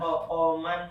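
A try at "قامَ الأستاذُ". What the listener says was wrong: Qoman kok qoman? Qomal. Pakai alif lam ustadznya. Qomal ustadzu.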